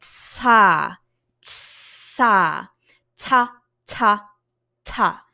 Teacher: When you're about to make a T sound, you drop your tongue down from the roof of your mouth. And for a split second, you've actually got an S sound. It's like tsa, tsa, ta, ta, ta.